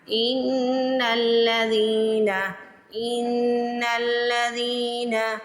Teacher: زال زیر کے بعد یا ساکن آ رہا ہے تو زال کو کھینچ کے ادا کریں گے ان الذین ان الذین. جیسے ہی آپ نے زال کو پڑھنا ہے آپ نے زبان جلدی سے دانتوں کے درمیان میں رکھ لینی ہے. زال کو سوفلی ادا کرتے ہیں.